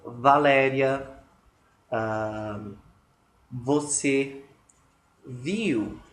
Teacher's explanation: há um contato entre dente e lábio inferior, uma fricção, e tem um barulho